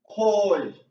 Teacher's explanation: Our first tone is a high even tone, being koi.